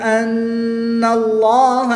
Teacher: نون مشدد میں ہمیشہ غنہ ہوتا ہے، یہاں پر غنہ کر کے پڑھیں گے